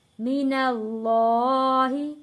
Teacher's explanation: یہاں پہ اللہ کا لام موٹا پڑھا جائے گا کیونکہ اللہ کے لام سے پہلے زبر ہے